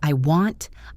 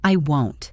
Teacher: The sound for want is more open like the O in hot.